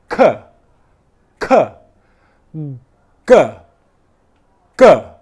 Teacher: For me to make the 'G' sound or the 'K' sound in English the same part of my tongue the back of it, is touching the same part of my mouth, which is the back of the mouth. 'K' and 'G', /k/ and /g/ are plosive sounds, where airflow stops and then explodes out. /k/ /g/ The only difference between 'K' and 'G' is that one sound is voiced /g/ and the other sound /k/ /k/ is unvoiced and my voice box is staying still.